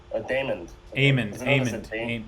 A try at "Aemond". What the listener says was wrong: Aemond. You're saying Daemon. Aemond. Take the D and put it at the end.